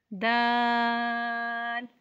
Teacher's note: दाल जुबान की नोक और ऊपर के दांतों की जड़ से अदा होता है